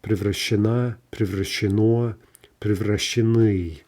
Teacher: Okay, so some of these forms can be a bit of a mouthful, and we have to, of course, be careful to save the stress until the very final syllable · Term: shifting stress